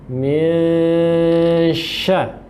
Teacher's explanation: maka itu harus dibaca samar nunnya, kemudian di tengah-tengahnya ada dengungan, jadi terbaca min syar, ya, bukan min syarri, seperti itu.